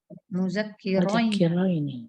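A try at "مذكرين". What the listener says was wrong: mudzakirina. Tulisannya mirip tapi ininya barisnya dibalik. ini fathah dulu baru kasroh, ini kasroh dulu baru fathah. Nah, itu dibalik.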